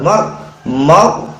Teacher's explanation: Kemudian ada huruf ra sukun, harus dibaca tebal.